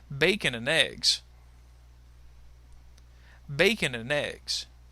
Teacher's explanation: and will also be reduced and that bacon and and will actually kind of link together